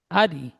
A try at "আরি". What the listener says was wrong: আরি টান হবে না, হারাকা টান হয় না।